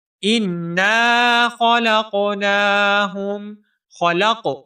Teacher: انا خلقناہم، خلق، لام کو قاف ساکن کے ساتھ ملائیں گے، قاف حروف قلقلہ میں سے ہے، یہاں پر ہم تھوڑی سی جنبش پیدا کر کے پڑھیں گے۔